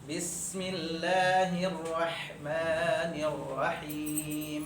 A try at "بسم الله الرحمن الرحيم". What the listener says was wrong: Rahim, berilah aja. Rahim enggak ada tekanan. Ya, tekanannya aja dihilangkan.